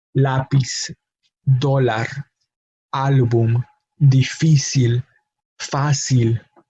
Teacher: All of those words are expected to have their emphasis on the last syllable because they all end in a consonant other than N or S. However, they do not have their emphasis on the last syllable, but on the second to last syllable, meaning that we do need to write the accent mark on that second to last syllable to let the speaker or the reader know how to pronounce the word.